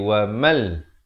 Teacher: Asalnya wa man, mim baris atas bertemu nun bunyi man. Tapi bila datang lam jadi wa mal. Terus masuk di dalam lam tanpa didengungkan. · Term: masuk tanpa dengung